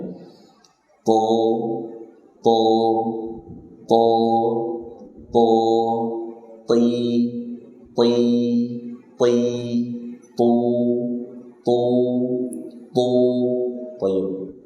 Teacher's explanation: Ujung lidah tempelkan ke situ. Pangkal lidahnya naikkan. To, enggak ada angin.